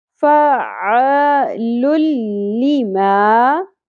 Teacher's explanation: تو جب بھی تنوین کے بعد لام یا را آ جاتا ہے تو ہم ملاتے ہوئے پڑھتے ہیں لیکن غنہ نہیں کرتے، یعنی ادغام بغیر غنہ ہوگا. تو نون ساکن کی آواز بیچ میں تنوین کی آواز کو سکپ کرتے ہوئے پڑھیں گے، ٹھیک ہے، غنہ نہیں کرنا.